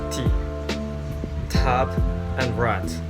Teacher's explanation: Oral passage is blocked by pressing the tongue tip against the alveolar ridge.